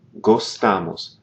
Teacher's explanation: notice here in the nos form we don't have that open o it's gostamos